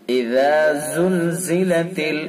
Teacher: اذا زلزلت اور زا کو پھر سختی سے ادا کریں گے، ذال کو نرمی سے، زا کو سختی سے۔ · زبان کی نوک کو ثنا علیا کے یعنی اوپر والے جو دانت ہیں ان کے کنارے پر لگائیں گے اور نرمی سے ادا کریں گے